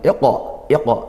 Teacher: di sini qaf sukun dibaca qalqalah sughra ya, kita mantulkan